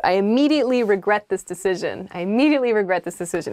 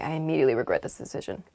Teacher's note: you can say I immediately regret this decision but with kind of like a flat tone to it